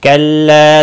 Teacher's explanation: कल्ला ला अलिफ मद्दा है, एक अलिफ के बराबर खींच कर पढ़ेंगे।